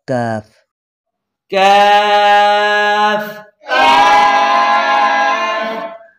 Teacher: زبان کی جڑ کو تالو کے سخت حصے کے ساتھ لگانے سے کتاب والا کاف ادا ہوگا